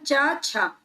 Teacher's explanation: ये वाला जो वर्ग होता है ना, च वर्ग, इसे ही संघर्षी बोला जाता है। ठीक है, स्पर्श संघर्षी व्यंजन इन्हें बोला जाता है च वर्ग को।